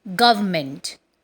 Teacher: R and N are silent and it is pronounced as government